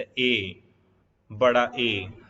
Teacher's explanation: कंठ तालव्य यानी कि गले और तालु से दोनों से बोले जाएं